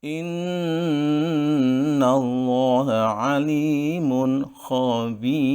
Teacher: nada berikutnya yang merupakan kelanjutan atau pengulangan dari nada sebelumnya yaitu diawali dengan tinggi dan diakhiri dengan datar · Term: Lagu nahawan